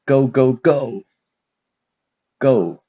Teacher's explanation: The fourth one, falling tone, similar to the tone, the stress in go go go go. So we can see the tone or the stress is going down